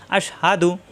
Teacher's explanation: হা কন্ঠের শুরু থেকে অর্থাৎ মুখ খোলা থাকবে